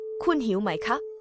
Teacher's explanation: mai for questions is pronounced with a rising tone, making it distinct from mai, meaning no or not, which has a low tone.